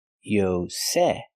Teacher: The stress is on the second syllable.